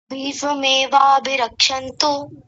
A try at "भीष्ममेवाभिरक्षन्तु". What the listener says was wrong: नहीं, फिर वही बोल रहे हैं, भीष्म में। एक माँ तो यहाँ है और एक माँ बाद में है, तो क्या बोलेंगे? भीष्म में।